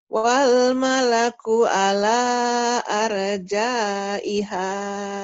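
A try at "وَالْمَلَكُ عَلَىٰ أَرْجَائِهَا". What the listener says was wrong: Ainnya belum keluar tuh. Harusnya gini. Wal malaku ala, ala. Latihannya di situ nelen apa ya? Nelen nasi gitu ya. Nelen enggak makan nasi ya. Nelen buah deh. Buah yang kecil. Kayak keselak.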